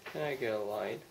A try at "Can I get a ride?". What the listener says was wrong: R 발음이 더 굴르게 해야 됩니다. Can I get a ride? 예, 그 R 발음이 굴리면 약간 입을 아, U 발음을 약간 넣어서 그 준비 단계를 만들어야만 R 발음이 제대로 나죠.